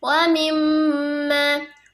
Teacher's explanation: di pembacaan wa mimma ada penekanan karena di situ ada gunnah dan penekanannya itu sebanyak 2 harakat.